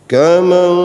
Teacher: bukan suara mim, tapi suara nun yang disamarkan. Berarti sama dengan ikhfa gitu.